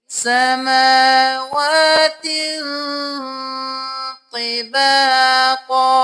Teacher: تنوین ہے تو ہم یہاں پہ ناک میں آواز لے کے جائیں گے، دیر لگائیں گے